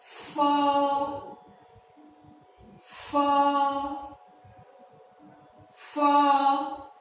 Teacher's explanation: The next set of consonants we're going to learn is labiodental sound. This one is the F sound, but it's you pronounce it with your lower lip and your upper teeth.